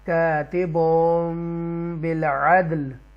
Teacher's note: تو جب یہ با آ جاتا ہے تو یہاں پر میم، یہ چھوٹی سی میم لگا دیتے ہیں، مرج کر دیتے ہیں، اس کی تنوین کی آواز کو مکس کر کے پڑھیں گے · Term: اقلاب